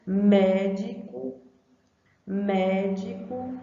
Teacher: o mé já é pronunciado com mais intensidade